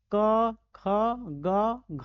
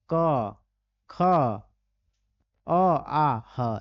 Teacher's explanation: ऐसे हैं जिनका उच्चारण कंठ से होता है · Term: कंठ से वर्ण